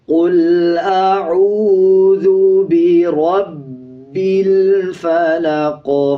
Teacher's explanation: اسی طرح آگے دیکھیں لام کے اوپر جزم ہے، لام سے پہلے والا جو الف ہے اس کو سکپ کر دیں گے، با کو لام کے ساتھ ملا کے پڑھا جائے گا۔ آخر میں قاف ہے، جب وقف کریں گے قاف کا زیر سائلنٹ ہو جائے گا، قاف پہ قلقلہ کیا جائے گا اور یہ موٹا قاف ہے۔